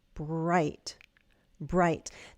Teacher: The B, your lips come together, br. And then you move into the R.